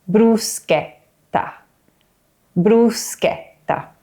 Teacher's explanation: Bru. And the double T at the end is long, with almost a little pause in the middle.